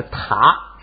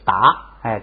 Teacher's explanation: 原来是塔，是送气的，一加上加字变成不送气打